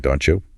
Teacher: The T and the Y sounds merge together to create a cheese sound.